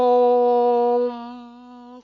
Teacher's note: उच्चारण में 3 गुना समय लगे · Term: प्लुत स्वर